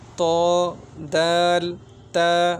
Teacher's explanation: জিহ্বার আগা সামনের উপরের 2 দাঁতের গোড়ার সঙ্গে লাগিয়া ত দাল তা উচ্চারণ হয়।